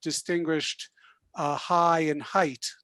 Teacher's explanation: the generation before me would not have distinguished high and height, different vowels there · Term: Canadian raising